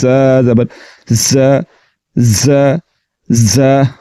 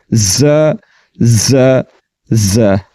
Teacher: تو زا کو حروف صفیریہ کہا جاتا ہے۔ اس کو پڑھتے ہوئے سیٹی کی طرح تیز آواز نکلے گی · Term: صفت صفیر